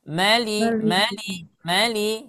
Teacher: hati-hati ya maanya jangan panjang